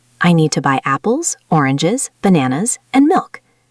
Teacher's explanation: your voice goes up on each item except the last one, where it falls. This signals that you've finished the list. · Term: listing